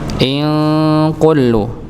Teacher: ini ada nun sukun bertemu dengan kaf, maka dibaca ikhfa samar